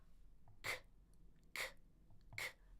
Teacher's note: a K is the back of your tongue lifting in the back of your mouth